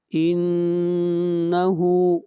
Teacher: اگلی آیت، انہو، نون کے اوپر غنہ، ہا کو کھینچ کر پڑھیں گے 1 الف کے برابر